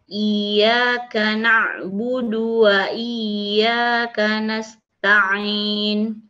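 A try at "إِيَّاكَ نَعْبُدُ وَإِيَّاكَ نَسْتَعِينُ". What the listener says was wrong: Jadi usahakan Bu, nanti keluar hurufnya jangan dari khayshum, dari jalur hidung. Jadi bunyinya agak dari jalur hidung. Diusahakan al-jauf dari rongga mulut. Iyyaka na'budu wa iyyaka nasta'in.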